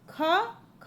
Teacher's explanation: ख जब बोल रहे हैं तो कंठ यानी गले में जोर जोर लग रहा है।